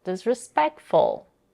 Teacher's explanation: She also raises her intonation on the stressed syllable, peck, to emphasize the word even more